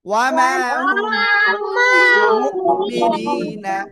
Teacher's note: মিম সাকিনের পরে বা আসছে জন্য গুন্না।